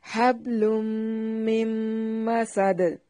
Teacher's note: فی جیدہا حبل، فی جیدہا حبل من مسد، من مسد، مسد، میم کے اوپر شد ہے، میم کو ڈائریکٹ میم کے ساتھ ملائیں گے